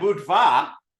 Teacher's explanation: there's a duh then there's an aspirated duh and then there's a sneaky little W in there